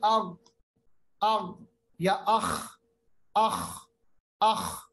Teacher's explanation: इन हुरूफ को पढ़ते वक्त थोड़ी सी खराश होती है,